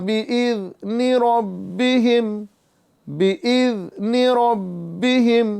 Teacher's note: र को पुर करेंगे बा में कलकला खूब जमाव के साथ अदा करेंगे क्योंकि बा हरूफ कल कलकला होने के साथ-साथ मुशद्द हो रहा है।